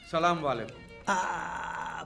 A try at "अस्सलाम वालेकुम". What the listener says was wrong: बड़े बड़े लोग यहीं पे गलती कर देते हैं। सलाम वालेकुम नहीं अस्सलाम वालेकुम।